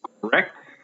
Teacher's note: We have correct, that's stressed on the back half. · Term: iambic